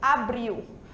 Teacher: Geralmente quando a gente fala em português, o nosso L sai com som de U, abril, certo?